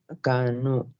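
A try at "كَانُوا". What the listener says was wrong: کھینچے مولانا، مدہ کریں اس کو.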